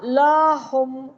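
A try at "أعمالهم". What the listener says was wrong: लहुम। लहुम। लाहुम नहीं, लहुम फौरन। अमालहुम। लहुम लहुम लाहुम नहीं, फौरन बोले। अमालहुम।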